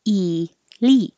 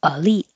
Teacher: some people keep the E pronunciation e LI or change the E to uh because it's not stressed